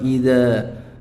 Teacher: Begitu juga fathah diikuti alif pada lafadz idza. Ini adalah bacaan mad tabi'i, kadar panjangnya adalah 2 harokat.